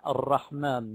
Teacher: الرحمن هذه راء وحده ولو انها مكون من رائين يرتفع بها المخرج ارتفاعه واحده